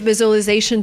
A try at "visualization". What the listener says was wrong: I cannot say a great visualization tool. The word is pronounced differently. We don't say visualization. We say visualization. So it's not the z sound like zebra, it's the j sound like usual, visual. We have the long oo sound plus the o. So we have the w sound in the middle linking the vowels.